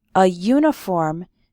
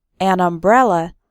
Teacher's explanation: uniform starts with a y sound, but an umbrella because umbrella starts with an a sound, a vowel sound